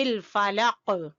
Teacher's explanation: جب سٹاپ کریں گے، وقف کریں گے، تو قاف کے اوپر قلقلہ ہوگا